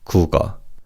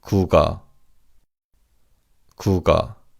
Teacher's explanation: the 기역 받침 in the first syllable carries over to the second syllable